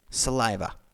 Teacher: the tonic accent is on the second syllable